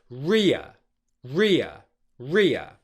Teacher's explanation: we're putting the main stress of the diphthong on the short English vowel sound and then transitioning to the schwa sound after that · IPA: /rɪə/